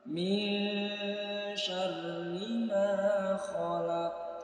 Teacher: Nun mati bertemu dengan huruf shin, terjadi hukum ikhfa hakiki. Disamarkan kemudian didengungkan dengan memposisikan lidah kita di tempat keluarnya huruf shin, yaitu di tengah-tengah lidah.